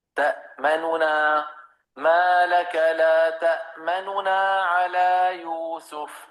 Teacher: نون کے ضمہ کو، نون مضموم کو باقی رکھتے ہوئے اپنی آواز کو پست کر دینا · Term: الروم